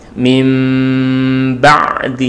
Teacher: Jadi kalau iqlab itu kan nunnya berubah menjadi mim, kemudian baru masuk kepada ba, itu yang wajah pertama atau cara membaca yang pertama, idbaq asyafatain.